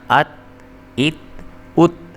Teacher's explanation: یہ تا جو ہے اس کو موٹا کر کے یا پر کر کے نہیں پڑھنا، کیونکہ تا جو ہے وہ حروف قلقلہ میں سے نہیں ہے، اس لیے اس کو پر کر کے نہیں پڑھنا آپ نے۔